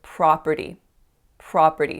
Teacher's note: making that nice open ah sound on that first syllable I said property property so a lot of my clients make